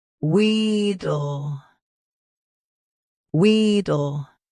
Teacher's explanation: Both US and UK have the same pronunciation of this word. Stress we. Keep dill soft and quick.